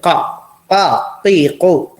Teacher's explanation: താഴെ ഭാഗം താഴോട്ട് തന്നെ, മേൽഭാഗം ഇങ്ങനെ പിന്നെ നടു കഴിഞ്ഞ് കുറച്ച്, നാവിന്റെ നടു കഴിഞ്ഞ് കുറച്ച് കൂടി ഉള്ളിട്ടുള്ള ആ ഭാഗം അത് അണ്ണാക്കിൽ തട്ടിക്കുക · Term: ഖാഫ്